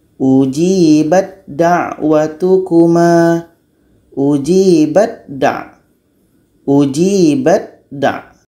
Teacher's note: Kalau ta sudah sempurna masuk kepada da, maka sudah terjadi idgham kamil.